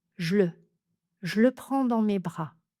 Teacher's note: On peut aussi choisir d'enlever le premier e de je et cela donne je le je le prends dans mes bras.